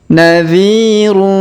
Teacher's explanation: huruf d kita panjangkan dua harakat karena di depannya terdapat Ya Sukun